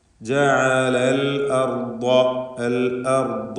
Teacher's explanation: ഹംസ clear ആയിരിക്കണം, ഷിദ്ദത്തിൻ്റെ അക്ഷരമാണ്. ജഅലൽ അർദ എന്നായി പോകരുത്.